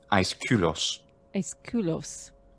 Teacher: the K, that's the aspirated consonant, which was typical of the Attic pronunciation of 5th century BC.